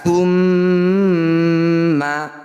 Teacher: mim bertasdid disebut bacaan gunah musyadadah harus dibaca dengung dua harakat